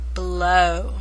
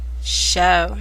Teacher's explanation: Remember, try the usual sound first, and when OW are at the end, they both are feeling pretty comfortable. So W takes a little nap, and O makes her long O sound.